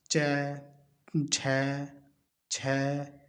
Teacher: तो ये हो जाएगा तालु, च, झ, छ, मतलब एक पर्टिकुलर जगह से तालवे से लग के आते हैं